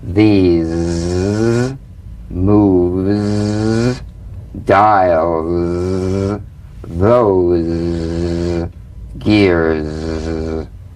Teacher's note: The Z vibrates in that very small open space between the tongue and the upper teeth. Right in here. · It's in that little space that the Z sound is formed. So feel a smooth, strong vibration in the teeth and in the front of the tongue. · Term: voiced S sound fricative